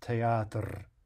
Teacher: we really hear something like more like three syllables